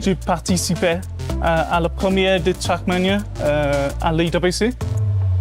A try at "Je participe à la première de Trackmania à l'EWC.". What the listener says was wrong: The E is silent in participe.